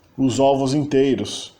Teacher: os S's finais do português, tipicamente são realizados como Z iniciais das palavras seguintes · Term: liaison